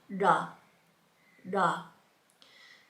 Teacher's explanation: we're going to start in the retroflex area, the back of our mouth, where our tongue will touch the palate